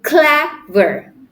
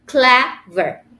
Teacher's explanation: we put the stress on the on the syllable CLA not ver